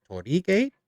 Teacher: It's a hard O and then the kind of rolled R and then the two I's make an E